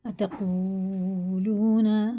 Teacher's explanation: واو ساکن سے پہلے پیش ہوتا ہے، الٹے پیش کی طرح کھینچ کے پڑھتے ہیں، دونوں کو الٹے پیش کی طرح کھینچ کے پڑھیں گے.